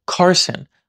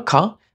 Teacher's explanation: So ka at the beginning of a word has a little extra puff of air to it. Like in my name, Carson, I would pronounce it car. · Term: aspirate